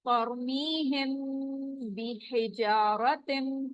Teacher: मीम साकिन के बाद अगर बा आएगा तो आवाज हम मीम की थोड़ी देर वहां पर छुपाएंगे